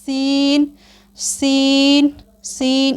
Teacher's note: इसे अदा करते वक्त सीटी की तरह तेज़ आवाज़ निकलती है। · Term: सीटी वाले हरूफ